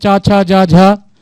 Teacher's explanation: च वर्ग के सारे वर्ण जैसे च छ ज झ और य और तालव्य स ये सारे जो है कहां से उत्पन्न तालू से उत्पन्न होते हैं